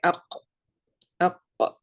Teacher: You can hear that the qaf comes from the halq